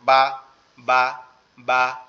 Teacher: ওয়াওটা হচ্ছে ঠোঁট গোল করে হবে, বা হচ্ছে ঠোঁটের ভিজা অংশ থেকে অর্থাৎ ভিতরের অংশ থেকে